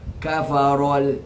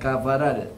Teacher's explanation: Kafaral tu try baca tebalkan dia. Bacakan kafarol, jangan kafaral.